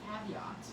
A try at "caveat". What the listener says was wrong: Caveat. It sounds like you're saying caviar there.